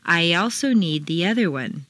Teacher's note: the undercurrent of your voice run it all together go away after a long e sound your lips will be pulled back far enough to create a y Glide or liaison